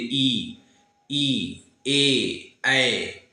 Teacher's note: आगे वाला हिस्सा ये आपका ऊपर उठता है तो इसे हम लोग क्या कहते हैं अग्र स्वर कहेंगे